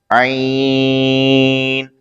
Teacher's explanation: عین حلق کے درمیان سے ادا ہوتا ہے